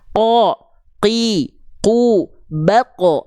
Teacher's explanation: huruf qaf ini ketika dilafalkan dia tidak akan mengeluarkan percikan-percikan nafas.